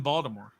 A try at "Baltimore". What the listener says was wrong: No, Baltimore. You put the T in there. There's no T in Baltimore.